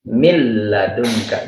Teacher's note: nunnya tidak terdengar masuk ke huruf lam dan tidak ada gunnah, tidak ada keluar dari al-khayshum. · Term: bila gunnah